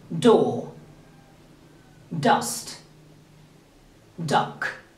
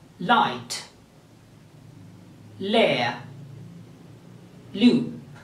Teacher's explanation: produced at the alveolar ridges right behind the top teeth so the place of articulation for these sounds is alveolar ridges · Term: alveolar sounds